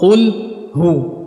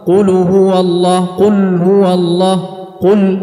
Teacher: harus kita hilangkan damah pada lam karena huruf lam yang sukun ini dia berada di antara dua huruf yang damah Qul hu Maka hati-hati jangan sampai lamnya juga ikut damah Qul